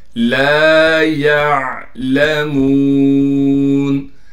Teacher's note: لام کے بعد حروف مدہ میں سے الف آ گیا، لہٰذا لام کو ایک الف کی مقدار کھینچیں گے